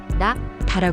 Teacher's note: 한국어의 다는 혀끝이 윗니 뒤에 닿았다가 떨어지면서 나는 소리지만 일본어의 다는 혀가 닿는 위치가 조금 더 안쪽이고 울림이 동반됩니다